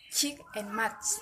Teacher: dimulai dengan bunyi berhenti dengan udara yang terbentuk di belakang artikulator yang kemudian dilepaskan melalui saluran sempit sebagai frikatif, atau bukan ledakan bersih seperti yang dilakukan berhenti.